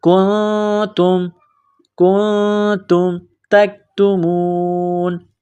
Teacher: نون ساکن کے بعد تا ہے تو یہاں پر غنہ کیا جائے گا